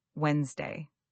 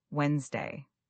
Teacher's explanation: there's a D in the spelling that we don't really pronounce. Many learners say wedest day with three syllables, but native speakers say Wednesday almost like it's spelled w nsd a y. · That middle D is silent, and the word compresses into 2 syllables.